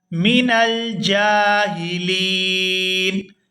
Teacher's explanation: وقف کریں گے تو وقف کی صورت میں نون جو ہے یہ ساکن ہو جائے گا